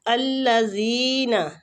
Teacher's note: زال کو کھینچیں گے، یا مد ہو رہی ہے